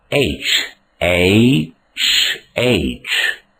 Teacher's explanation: There is no ha in this letter.